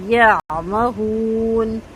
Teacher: عین کی آواز بہت اچھی سے ادا کرنی ہے، حلق کے اندر سے آئے گی، درمیانی حلق سے، اور تھوڑی سی آواز چلے گی